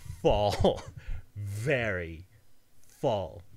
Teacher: For example, the F in fall. They're labiodental because they involve your lower teeth having contact with your upper lip.